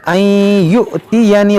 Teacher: हमज़ा साकिना है, झटका देकर पढ़ेंगे